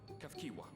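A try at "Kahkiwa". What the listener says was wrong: It's an H, my dude.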